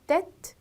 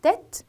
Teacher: 발음을 조금 더 크게 벌린 애로 읽어주시면 돼요